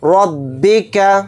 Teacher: رَبِّکَ، را کو جلدی پڑھیں گے، را کا اوپر زبر ہے، را کو موٹا یعنی پر پڑھیں گے۔ با کو جلدی پڑھیں گے، کاف کو جلدی پڑھیں گے۔